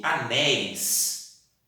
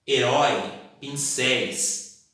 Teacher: Se eu pronuncio anéis, tem uma abertura vocal. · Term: sons abertos